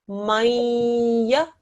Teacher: When it's a ya mushaddad, you make a nasal sound.